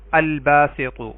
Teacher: با حروف قمری میں سے ہے تو ال کا لام پڑھا جائے گا